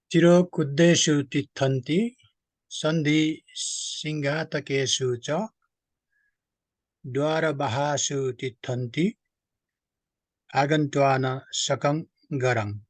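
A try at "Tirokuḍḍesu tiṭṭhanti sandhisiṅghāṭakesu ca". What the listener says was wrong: Great.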